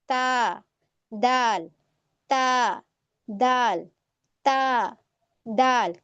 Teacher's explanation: जबान की नोक ऊपर वाले दो दांतों यानी कि सनाया उलिया की जड़ से लगती है